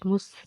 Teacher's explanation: سین حرف سفیریہ، جب اس کو ادا کریں گی سیٹی کی آواز آئے گی